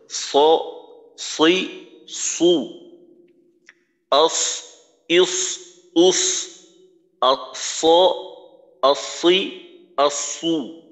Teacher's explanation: অর্থাৎ সদ যখন আমরা উচ্চারণ করব, জিহ্বার গোড়াটা উপরে, জিহ্বার মধ্যখানও উপরে, জিহ্বার আগা সামনের নিচের দুই দাঁতের আগার সঙ্গে লাগবে।